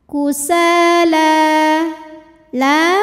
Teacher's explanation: huruf Sin panjang dua harakat quusala la Mad Thobi'i muqaddar karena ada baris fathah panjang di atas huruf lam cara bacanya panjang lamnya dua harakat · Mad thi'i dahiri karena ada Alif didahului fathah maka huruf Sin panjang dua harakat